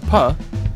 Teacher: manner of articulation so for PAH we can denote it as a voiceless bilabial stop